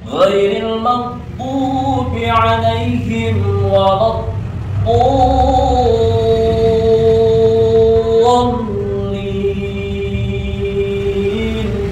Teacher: di situ ada to-nya panjang, lalu bertemu dengan lam bertasdid gitu ya. Jadi panjang dulu bacanya, udah panjang lalu ditekan gitu ya.